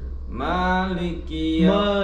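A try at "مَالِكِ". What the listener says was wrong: jangan tu fathah buka. Maliki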